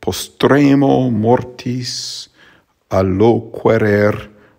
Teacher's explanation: for postRēmō, moRtis, alloquereR, the R is trilled in all of those cases